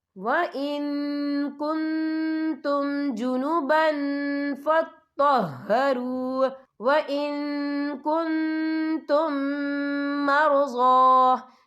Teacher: یا دیکھیں وَإِن، یہاں نون ساکن ہے، نون ساکن کے بعد جو ہے کاف آ رہا ہے، اور کاف جو ہے اکفا کا ورڈ ہے تو ہم یہ اکفا کریں گے، نون ساکن کی آواز کو ناک میں چھپائیں گے